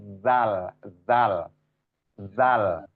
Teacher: ujung-ujung lidah bertemu dengan ujung gigi seri atas